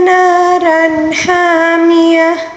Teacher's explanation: را کے اوپر دو زبر ہے اور اس کے بعد ہا ہے، یہاں پر اظہار کا قاعدہ ہے کیونکہ حمزہ ہا، عین ہا، غین خا میں سے جو بھی حروف آ جائیں تو یہاں پر اظہار کا قاعدہ ہوتا ہے، اس کو اظہار حلقی کہا جاتا ہے، ٹھیک ہے۔